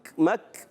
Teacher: کاف اور تا یہ شدیدہ محموس حرف ہیں, جب ساکن ہوتے ہیں سختی کے ساتھ آواز بند ہوتی ہے, اور سختی کے ساتھ آواز بند ہونے کے بعد پستی نرمی سے سانس جاری ہوتا ہے, ٹھیک ہے.